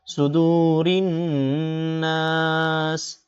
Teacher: সুদু একালিপ টান হবে, আর রিন নাস এখানে নুনে তাসদিদ হয়েছে, গুণনা করতে হবে।